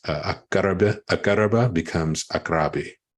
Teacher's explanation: You have 3 radical verbs that are in the a form, the causative a form, like akaraba. That drops the vowel before the second radical, that the ra, and then akaraba becomes akrabi.